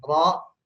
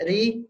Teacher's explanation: Nah, kalau ro yang fathah dan dhammah, baik ro maupun ru, pangkal lidahnya naik, jadi tebal. Kalau ro yang kasroh atau ri, ya ri, pangkal lidahnya dia turun, posisi normal ya.